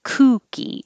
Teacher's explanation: And number five is kooky, and that has an oo with rounded lips.